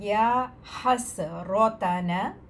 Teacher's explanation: را کو موٹا پڑھیں گے، باقی سارے حروف جو ہیں وہ باریک ہیں